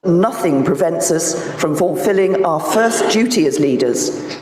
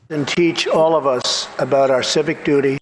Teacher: D to j is called yod coalescence.